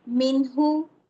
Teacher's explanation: یہاں پہ دیکھیں یہ ایک حرف کے اندر آیا ہے، تو نون یہاں پہ کیا آ گیا، ساکن، اور آگے ہا آ گیا، تو ہا کون سا ہے، حروف حلقی میں سے ہے، تو یہاں پہ میں نے نون کی آواز کو ظاہر کرنا ہے